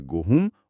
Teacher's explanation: गोधूम में जो ध था वो बोलते-बोलते ह बन गया। और जो म की ध्वनि थी वो नाक से होते हुए चंद्रबिंदु में बदल गई।